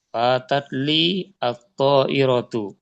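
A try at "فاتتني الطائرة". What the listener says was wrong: Fatatni bukan li. Ni bukan li. Ni. Ya, fatatni. Ninya panjang. 2 harakat. Fatatni at-ta'iratu.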